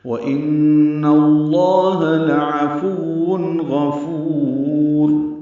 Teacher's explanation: نون مشدد پہ غنہ ہے ، نون کی زبر کی وجہ سے لام اس میں جرا